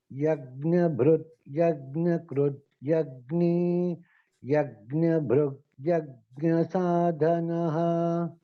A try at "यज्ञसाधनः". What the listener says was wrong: साधनः you are stressing, right महोदय? ध